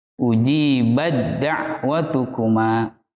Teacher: dileburkan huruf ta sukun ke huruf dal. Sehingga yang terdengar hanya bunyi huruf dal.